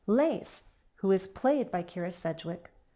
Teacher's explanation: adjective Clause with commas if I were to read this aloud my voice would recognize those commas with a slight pause and slightly lower intonation